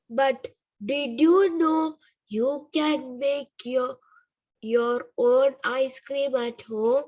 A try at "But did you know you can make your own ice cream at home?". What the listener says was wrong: Can you bring a little bit of intonation to this, rather than just reading it out? And you have to stress on the plosives.